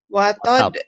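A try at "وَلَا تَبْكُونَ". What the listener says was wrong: Bukan watad. Watad Iya bagus, tapi ini jangan dikol-kolahkan ya. Jangan watab, jangan watab. Ini betul ada kol-kolah ini. Wala tabkun.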